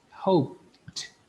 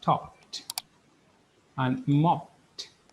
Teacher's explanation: important sound okay let me highlight it it's sound voiceless sound then the ed is pronounced as a t do not do not create an extra syllable or id sound